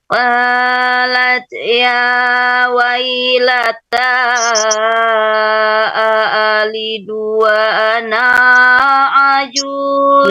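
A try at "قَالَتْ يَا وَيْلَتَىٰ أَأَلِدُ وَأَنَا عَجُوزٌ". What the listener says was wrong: Anaknya nggak boleh panjang. Anaknya nggak boleh panjang. Wa ana.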